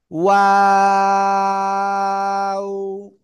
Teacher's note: দুই ঠোঁট শুরুতেও গোল হবে, শেষেও গোল হবে।